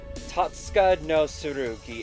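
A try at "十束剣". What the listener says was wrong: I think that might be pronounced Tosuka no Tsurugi. Maybe. It's just because it's one of those things where the T is silent kind of thing. But I'm not sure 100% in this case. Because it's in the middle of the word, but that's why I'm not sure.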